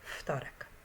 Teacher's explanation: do G zjawiskiem odwrotnym jest ubezdźwięcznienie Czyli jeżeli spółgłoska dźwięczna i jest wymawiana jako bezdźwięczna ze względu na sąsiedztwo spółgłoski bezdźwięcznej to takie zjawisko nazywamy ubezdźwięcznieniem